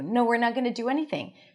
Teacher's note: So the answer is with a pitch going down.